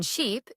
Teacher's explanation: your tongue is high and tense. Your lips spread slightly.